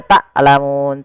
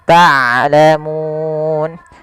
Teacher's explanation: Harusnya dia ain dari tengah tenggorokan kita dan ain mempunyai sifat bainiah di antara syiddah dan rakhawah tidak dialirkan suaranya dan tidak terlalu ditahan suaranya tapi di tengah-tengah di antara keduanya.